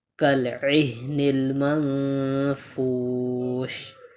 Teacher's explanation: نون ساکن کے بعد اخفا میں سے فا آ رہا ہے، تو یہاں پر ہم اخفا معال غنہ کریں گے